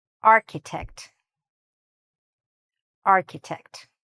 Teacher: Here, what's tricky is this CH. The CH again doesn't sound like CH. It sounds more like a K sound.